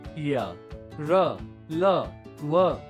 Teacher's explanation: इनके उच्चारण में जीभ मुंह के किसी भाग को पूरी तरह नहीं छूती और प्राणवायु भी कम समय रुकती है, अतः ये अर्ध स्वर जैसे लगते हैं। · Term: अंतःस्थ व्यंजन